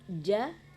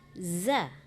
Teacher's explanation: Kalau ja itu letaknya kan di tengah-tengah lidah, sementara za ya di ujung lidah, ya kan, di ujung gigi, ya kan.